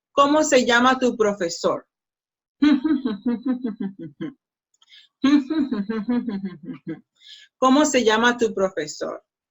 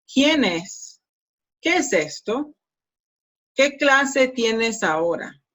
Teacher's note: it's not rising intonation, it's falling intonation · Notice that the intonation goes, it falls at the end of the sentence.